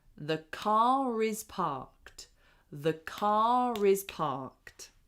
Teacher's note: So we link those two together and we say car is the car is parked. So it's almost like we put the R on the next word.